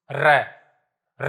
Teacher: र र बोलेंगे तो ऐसा लगता है जैसे बहुत ज्यादा वाइब्रेट कर रही है जीभ। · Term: परकंपित